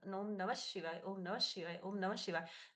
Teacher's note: हम प्रायः एक मंत्र का उच्चार करते हैं, बहुत बार करते हैं, वहां पर हम देखते हैं ओम नमः ह शिवाय, नमः ह शिवाय। तो म के बाद में जो विसर्ग है वो आप ध्यान से देखिएगा तो नमः ह नहीं बोलते